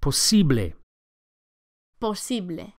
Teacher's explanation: The second syllable, the E, is accentuated.